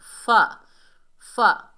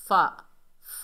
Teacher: फ़ा, फ़ा, फ़ा बारीक हर्फ है, इसे बगैर खींचे पढ़ेंगे। फ़ा का मखरज है जब ऊपर वाले दांतों के किनारे नीचे वाले होंठ के तरी वाले हिस्से पर लगते हैं तो ये अदा होता है।